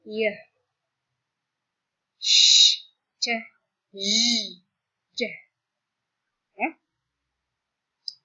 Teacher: bunyi yang dihasilkan dengan menyentuhkan lidah ke langit-langit mulut disebut dengan palatal